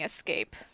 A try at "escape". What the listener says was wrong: You say escape. I think it's escape. Yeah, you say it like there's an X at the beginning. Escape.